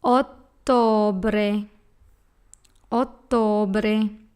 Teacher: a TT again the letter O is a soft oh and we have a letter R in the last syllable that should be pronounced hard and rolling